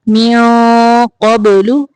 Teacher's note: ونوحا، یہاں پہ بھی ہا کی تنوین کو ظاہر کریں گے، ونوحا ہدینا من قبل، یہاں پہ دیکھیں نون کے بعد قاف آ گیا ہے، یہاں پہ اخفاء حقیقی ہو رہا ہے تو قاف موٹا حرف ہے، اس لیے ہم یہاں پہ اخفاء کو بھی تھوڑا موٹا کریں گے